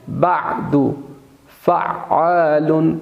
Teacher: عین کو آپ نے وسط حلق سے ادا کرنا ہے